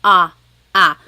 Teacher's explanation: So the letter A is more like an ah sound, ah, ah. And sometimes in English, the letter A is very short, like bat and hat. We don't want it flat like that. We want it more open